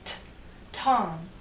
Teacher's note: You can feel the puff of air in t, Tom.